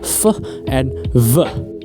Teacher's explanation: They help produce sounds known as bilabial which means both lips pressed together creating sounds such as P, B and M and labio dental which means the lower lip contacted with the upper teeth